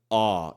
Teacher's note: verticalmente um pouquinho assim ó ela fica um pouco mais relaxada Ela não fica não fica arredondado dos lábios assim e então é um ó